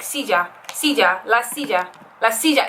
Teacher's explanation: basically like the double l makes a y sound but that y sound is sometimes pronounced like a j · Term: j sound